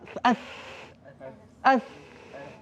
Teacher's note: Angin keluar saja kan? Tak ada getar. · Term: hamas